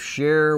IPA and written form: ˈʃɛər (Cher)